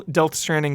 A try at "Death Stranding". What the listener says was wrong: It sounded like you said Del Stranding.